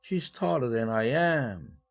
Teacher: 이 am이라는 비동사가 am tall이라는 의미를 다 대신 역할을 하고 있기 때문에 내용어 취급을 하는 것입니다. 그래서 am이 비록 기능어이지만 일강세의 배당을 받은 것입니다.